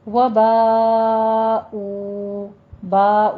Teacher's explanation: باء میں مد متصل واجب ہے، 5 کاؤنٹ کرنا ہے